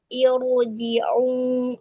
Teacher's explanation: itu ro-nya dibaca tafkhim, dibaca tebal